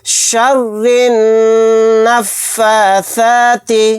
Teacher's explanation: را کو نون میں ملا دیں گے، یہ الف اور لام نہیں پڑھا جائے گا، یہاں پر نون کے اوپر تشدید ہے، یہاں پر ہم غنہ کر کے پڑھیں گے